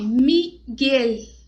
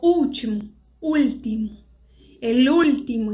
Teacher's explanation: no espanhol não tem essa de L com som de U. L tem som de L e U tem som de U.